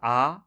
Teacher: সব থেকে নিম্ন স্বরধ্বনি হচ্ছে একটাই, সেটা হচ্ছে আ · আ উচ্চারণ করুন, আ, দেখুন একদম আল জিভ যেটা রয়েছে ছোট্ট পাড়া, সেই জায়গাটা থেকে কিন্তু আওয়াজটা আসছে